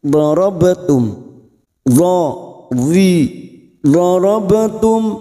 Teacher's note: ba sukun qalqalah sugroh, karena mati asli di tengah kalimat jangan lupa dipantulkan